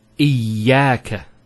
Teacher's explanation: Notice the ya gets a double vowel because of the shadda there.